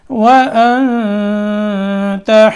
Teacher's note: وَأَنْتَ اخفا کرنا ہے نون میں، واو میں ہونٹ گول کرنے ہیں